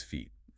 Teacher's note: Fit uses a short, relaxed vowel sound. Feet demands that you stretch your lips outward into a smile to produce a long, sustained E.